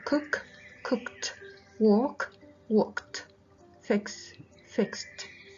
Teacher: Егер бұл қатаң дыбыспен бітсе, міне cook, walk, fix. ed дегі жалғау t болып қатаң болып айтылады.